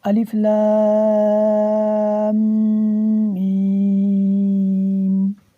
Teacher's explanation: اس کے اوپر جو ماد ہے اس کو ماد متصل کہتے ہیں۔ اس کی مقدار 4 الف کے برابر ہے، یعنی اس کو 4 الف کے برابر ہم لمبا کر کے پڑھیں گے اور میم میں ہم غنہ کریں گے۔ یہاں پر میم 2 دفعہ پڑھا جائے گا کیونکہ اس کے اوپر شاد ہے۔